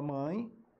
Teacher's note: a palavra mãe, a letra é E, mas o som é I